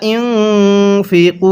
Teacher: হবে কারণ জবরের পরে খালি আলিফ এক আলিফ টানতে হয় ইউনফিকুন এখানে নুন সাকিনটা গুন্নাহ করব কারণ নুন সাকিনের পরে ফাটি ইকফার হরফ